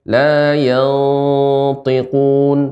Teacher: Ini juga ikhfa pada huruf isti'la sehingga dibaca dengan tebal. La yantiqun, tanpa dimonyongkan bibirnya.